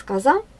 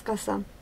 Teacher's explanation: При произнесении звука «з» мы слышим голос и шум, при произнесении звука «с» только шум. З, с, з, глухой, звонкий, с, глухой.